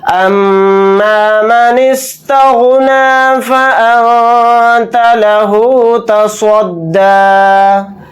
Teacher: نون ساکن کے بعد تا آ رہا ہے تو اس میں اخفا کا قاعدہ ہو رہا ہے، یہاں پر اخفا کر کے پڑھیں گے، صاد کو موٹا یعنی پر پڑھیں گے، دال کے اوپر کھڑا زبر لگا کر ہی پڑھیں گے حالت وقف میں، یا نہیں پڑھا جائے گا۔